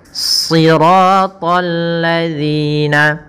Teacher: Kemudian pada lafal ta, ya, ta juga termasuk huruf isti'la dan huruf idbaq, maka harus menebal dalam pelafalannya.